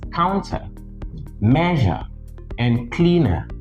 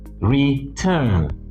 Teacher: whereas counter, measure, and cleaner are stressed on the first syllable, return is stressed on the second